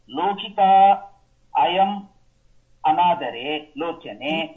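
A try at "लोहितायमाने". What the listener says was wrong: லோகிதாயமான உதரே லோச்சனே. ஒரே வேர்ட் அது.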